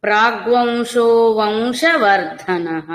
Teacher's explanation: వంశ అన్నప్పుడు నాసిక ద్వారా వకారం పలకాలి అనుస్వరానికి